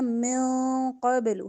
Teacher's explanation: نون ساکن کے بعد قاف ہے، اخفا کریں گے